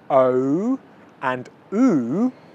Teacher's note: in the second two sounds oh and ooh my lips are rounded